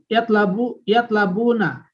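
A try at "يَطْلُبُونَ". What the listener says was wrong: Yatlubuna. Lamnya jangan berubah jadi fathah.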